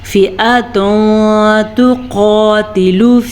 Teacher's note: تنوین کے بعد تا حروف اخفا میں سے ہے تو ہم نے تنوین کو چھپے ہوئے غنّے کے ساتھ پڑھنا ہے